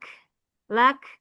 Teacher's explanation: Kaf sukun. Punya hamas percikan udara.